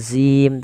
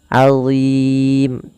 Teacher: Azim, Allah tidak dibaca dengan zim tapi azim, tebal huruf dha-nya, pangkal lidah kita terangkat. Allah, ujung lidahnya sebagaimana zal, azim.